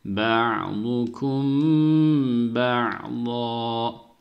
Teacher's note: mimden sonra ba geldiği için burada dudak ihfası yapıyoruz. Buraya bir elif miktarı tutup sonra durduk.